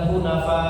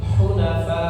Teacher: ketika berhenti dikasih tambahan volume suara ya dikasih tekanan fa ya supaya apa? Supaya huruf hamzahnya tidak hilang ya. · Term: nabr